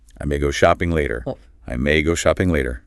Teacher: Notice how the may just glides directly into the verb go. No hesitation.